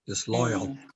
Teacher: And the AL almost sounds like UL.